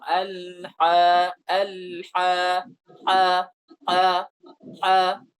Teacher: Pengucapannya tebal dan itu lebih ke atas dia makhrajnya, tidak di tengah lidah.